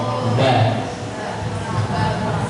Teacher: Jadi misalnya kita pengen mengucapkan huruf ba, ya, di mana kalau huruf ba, ya, dari kedua bibir, bibir atas dan bibir bawah bertemu